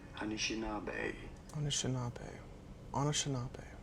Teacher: You do want to stress on the fourth syllable, on the na syllable.